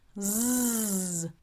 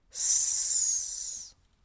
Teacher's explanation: Z, voiced, vibration. S, unvoiced, no vibration. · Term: voicing